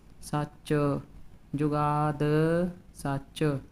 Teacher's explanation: ਚਚ ਨੂੰ ਥੋੜਾ ਜਿਹਾ ਲੰਬਾ ਲੈ ਕੇ ਜਾਣਾ ਹੈ ਸੱਚ ਚ ਨੂੰ ਭਾਰਾ ਰੱਖਣਾ ਹੈ ਥੋੜਾ ਜਿਹਾ